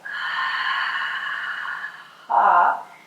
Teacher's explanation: ocean-sounding breath, and there's a slight constriction at the back of the throat